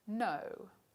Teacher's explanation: a voiced alveolar nasal which is just like d except that the velum is lowered so that air flows out through the nasal passages and the nose the symbol for it is the letter n and we find